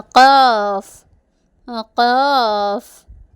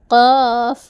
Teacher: നാവിൻ്റെ അങ്ങേയറ്റത്തെ നേരെ മേൽഭാഗത്തിനോട് ചേർന്ന് കൊണ്ടാണ് ഖാഫ് പുറപ്പെടുന്നത്